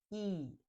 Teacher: your tongue is high and forward and your lips are stretched. E.